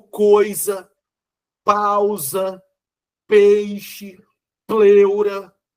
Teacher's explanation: O som do I e o som do U são fracos diante de A, E, O, que vem antes. E, com isso, nós vamos ter um contexto em que nós teremos A, E, O vindo antes, vogais. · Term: ditongo